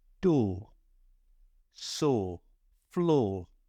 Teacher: your lips are forward slightly but your tongue is flat